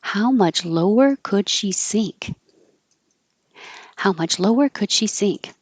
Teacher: How, lower, and sink are going to be emphasized.